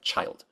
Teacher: It's what happens when you stick a t and a sh together. You get ch.